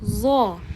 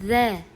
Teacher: Zo yo'g'on talaffuz qilinadi, og'zingiz havoga to'ladi. The bo'lsa ingichka talaffuz qilinadi.